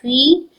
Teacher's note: فا زیر یا فی 2 حرکت لمبا کریں گے